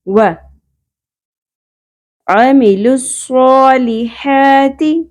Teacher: عین کے مخرج کا خیال رکھنا ہے وسط حلق سے نکالنا ہے